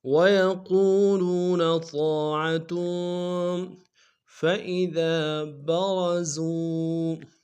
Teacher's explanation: وَيَقُولُونَ طَاعَةٌ، وَيَقُوم واو مدہ ہے، لو میں یہ بھی واو مدہ ہے، موٹا کریں گے الف مدہ ہے، اور تنوین تا کے اوپر تنوین غنہ کریں گے۔ وَيَقُولُونَ طَاعَةٌ فَإِذَا بَرَزُوا، فَإِذَا میں ذال کے ساتھ الف مدہ ایک الف میں کھینچیں گے، را کو موٹا کر دیں گے، زا کو واو کے سامنے لائیں گے، واو مدہ ایک الف میں کھینچیں گے۔